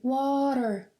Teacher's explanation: you want that your tongue tap the roof of your mouth you don't want to roll it